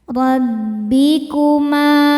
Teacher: Huruf ra dibaca secara tafkhim karena berharakat fathah. Cara bacanya ditebalkan.